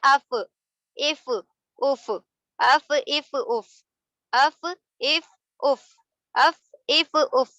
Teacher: اور یہ ہے فا کا مخرج, یعنی نیچے کے تر حصے سے ہونٹوں کے اوپر کے دانتوں کے کنارے کا مل جانا فا کو ادا کرتا ہے